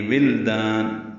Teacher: ساکن پہ اظہار ہے، شفوی ہے، آگے واو آ رہا ہے۔ ولدان میں واو ہونٹوں کی نا تمام گولائی سے ادا کرتے ہوئے لام ساکن سے ملائیں گے ، ولدان لام پہ قلقلہ نہ ہونے پائے، ولدان دال الف